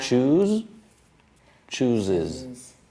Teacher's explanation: everything that ends in the z, what happens? Extra syllable.